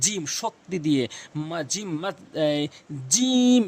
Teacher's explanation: জিহ্বার মাঝখান থেকে উচ্চারণ করবেন। জিম শক্তি দিয়ে। জিম জিম এভাবে টেনে উচ্চারণ করবেন।